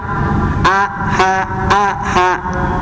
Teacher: Alha ada di tenggorokan bawah sama seperti a.